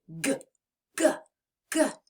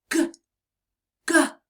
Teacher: press the back of your tongue to the back of your mouth and turn your voice on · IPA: /g/